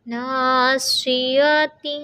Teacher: یہاں دیکھیں ماشاءاللہ، سب سے پہلے ہمارے پاس حرف ہے ناصیۃ، تو بہت دھیان سے خالی الف سے پہلے نون پر زبر ہے، تو یہاں پر الف مدہ کا قاعدہ 2 کاؤنٹس کھینچیں گے